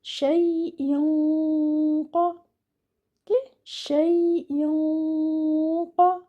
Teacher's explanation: your ghanna should be heavy because the letter which is after this tanween is a heavy letter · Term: heavy ghanna